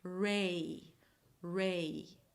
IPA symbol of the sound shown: ei